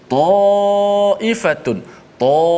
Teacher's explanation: Kerana huruf sebelumnya pun tebal, huruf ta yang kita dah bicarakan panjang lebar sebelum ni, huruf yang tafkhim. Maka alif di situ dibaca dengan tafkhim, dibaca dengan tebal oleh kerana huruf sebelumnya tebal. Maka tak boleh baca ta.